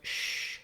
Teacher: The letters SH do say the sh sound. There your tongue is down and back and a lot of air comes out. It's a continuing sound.